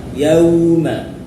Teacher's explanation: di kalimat pertama yauma ada lin, fathah diikuti waw sukun, yauma. Jangan yaw, harus u, ya, yauma.